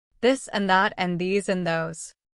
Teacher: Feel that gentle buzzing in your throat. That's the first th sound.